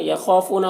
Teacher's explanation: خا کو پر پڑھیں گے، الف مدہ ہے. یہاں پر فو میں واو مدہ ہے، دونوں کو ایک الف کے برابر کھینچیں گے.